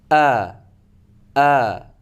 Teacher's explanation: dibuka, lidahnya rata, dan yang agak sedikit bergerak itu di tenggorokan paling bawah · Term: huruf hamzah